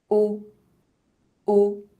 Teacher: Lips are rounded and mouth opening is very small. It looks like you're blowing out a candle or a kiss. Tongue is backwards and it doesn't touch the lower teeth. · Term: closed O, close O